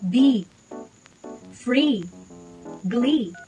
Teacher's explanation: place the blade of the tongue close to the front of the hard palate with the tongue tip near The Cutting Edge of the lower middle front teeth press the sides of the tongue firmly against the upper back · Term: e sound